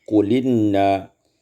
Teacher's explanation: 120 qul inna, naqal fatah lam, fatah ila lam wa wahzful hamzah, naqalkan fatah pada lam dan buangkan hamzah